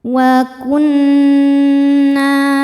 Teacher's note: Cara bacanya berdengung, tahan dengungannya kurang lebih 2 harokat. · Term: gunnah musyaddadah